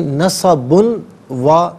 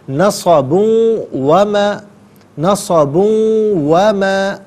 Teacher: نصب میں با کے اوپر 2 پیش کی تنوین ہے، اسے واو کے ساتھ ملا کر واو کی آواز کو غننے کے ساتھ ادا کریں گے۔ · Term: یرملون کا جو قاعدہ